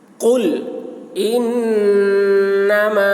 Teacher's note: نون مشدد ہے، نون میں غنہ ہوگا، میم میں مد کھینچیں گے۔